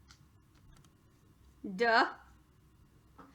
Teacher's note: this this syllable has a schwa use this spelling duh so instead of a long e it's an ah sound and that's a schwa